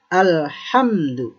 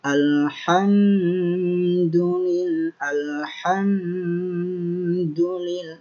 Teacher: Apabila masuk ke hukum izhar syafawi, maka bacanya harus jelas tanpa dengung.